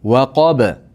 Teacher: ba bilan to'xtaganligimiz uchun qalqala bo'ladi.